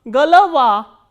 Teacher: G, o, l, o, v, a, and a is stressed and these 2 o are unstressed. So, these unstressed o will be pronounced as a. So, g, l, va, galava.